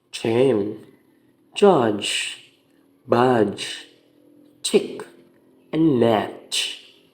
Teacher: The tongue blocks the air at the alveolar ridge, then release it. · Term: affricates